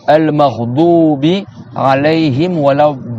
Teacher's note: C'est-à-dire le bout de la langue, il interfère pas dans la lettre. C'est le côté de la langue qui tamponne. Al-maghdubi, et tu lèves ta langue un peu, le l'air de la langue est élevé.